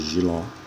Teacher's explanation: No mesmo caso de Giló, se separa com 2 sílabas, a sílaba tônica é a última e ela termina em O